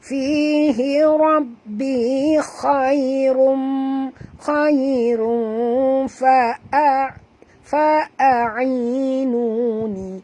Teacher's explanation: Okay, tanwin baris dua hadapan bertemu dengan fa. Kita kena sembunyikan atau sorokkan bunyi tanwin ini ke dalam huruf fa disertai dengung dua harakat ikhfa hakiki